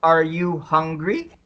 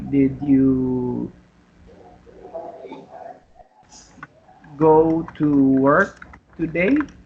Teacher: So the intonation, the intonation or the tone rises at the last word. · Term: rising tone